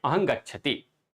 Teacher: अनुस्वार को हम लोग बोलेंगे तो बोलेंगे तो नासिका से ही लेकिन लेकिन अंग के जैसा बोलेंगे